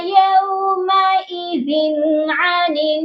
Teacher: ذال کی جو تنوین ہے یہاں پر ہم نے صرف اظہار کرنا ہے